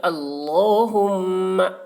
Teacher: اللہم انی، اللہ کو، لام کو موٹا کر کے پڑھیں گے. اللہم، میم میں تشدید تو غنہ کریں گے